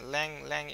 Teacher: ল্যাং এর কিন্তু এর উপরে খুব স্ট্রেস আছে, বাট গুয়েজ কিন্তু আমরা খুব দ্রুতই ছেড়ে দিচ্ছি